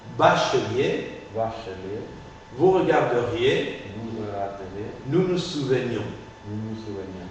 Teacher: L, N, R vont suivis des iodes, de la semi-voyelle I. Dans ce cas, j'articule le E muet précédent.